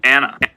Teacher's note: You can kind of see a nice little glottal stop at the beginning of that Anna a little bit. Anna. I kind of attack it.